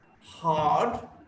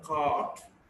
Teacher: is a back, unrounded, long vowel